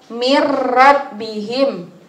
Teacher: Itu cara membacanya memasukkan tapi tidak mendengung. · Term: idgham bila gunnah